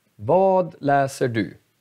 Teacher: Det här ordet är betonad. Vad och du är inte betonad.